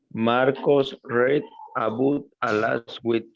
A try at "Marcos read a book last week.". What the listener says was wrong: In this case, it is not read. Read is in the present. Red is in the past. Red like the color, right? The color red, okay?